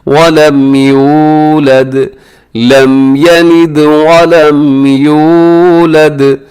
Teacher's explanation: اسے یو کو لمبا کیجئے گا کیونکہ اس میں واو ہے، واو ساکن سے پہلے پیش ہو، واو مدہ ہوتی ہے، اسے کھینچ کے پڑھا جاتا ہے، لمبا کیا جاتا ہے.